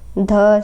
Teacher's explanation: सघोष महाप्राण होता है